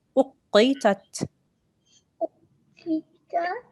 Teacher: this qaf is a thick sound, so you have to round on your mouth a little bit